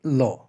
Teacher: এই ধ্বনিটি উচ্চারণের সময় জিভের ২ পার্শ্ব দিয়ে বাতাস বের হয় বলে একে পার্শ্বিক ধ্বনি বলা হয়